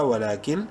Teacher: نون ساکن کے بعد لام حروف یرملون میں سے ہے، ادغام بلا غنہ ہوگا ، ولاکل، لام زیر